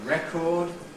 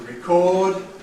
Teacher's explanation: We can say that the [e] there is the strong vowel and the [ɪ] is the weak vowel derived from it in the verb, to ‘record’ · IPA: [ˈrekɔːd]